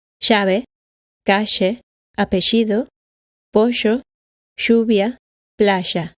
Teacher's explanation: in most of Argentina, Uruguay, and Paraguay, both Y and the double L are pronounced sh.